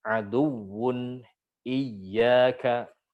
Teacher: Nah, nanti di situ juga ada hukum semacam apa, ada istilah nabr ya. Pada huruf waw dan ya yang bertasydid itu dinaberin supaya jelas bahwasanya itu adalah huruf yang bertasydid.